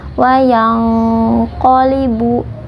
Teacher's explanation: makhraj huruf qaf yaitu dari pangkal lidah nya tebal · Nah, kita menyamarkan nun, kemudian kita menyiapkan huruf qaf. Makhraj huruf qaf yaitu dari pangkal lidah, hanya tebal, wayang qolibu. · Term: ikhfa